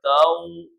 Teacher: اور اگر اس واو ساکن سے پہلے زبر ہم لگا دیتے ہیں، اس واو ساکن سے پہلے زبر ہے تو یہ واو پھر لین ہوگا، واو مدہ نہیں ہوگا۔